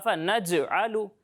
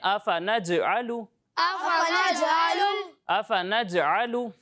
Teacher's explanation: یعنی آفا نج علو نہیں پڑھیں گے، اسے ایسے پڑھیں گے آفا نج علو. یہ نج، یہ جیم کی جو آواز ہل رہی ہے، مخرج سے واپس لوٹ رہی ہے، اسے کہتے ہیں کلکلہ